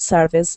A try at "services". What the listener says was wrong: Services. Remember to put the S on there.